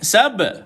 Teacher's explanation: Matikan pada huruf ba. Selalu banyak kali kita jumpa bacaan sab. Ada qalqalah, lantunan.